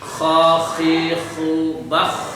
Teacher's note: Kho sekarang naik ke atas tenggorokan bagian atas.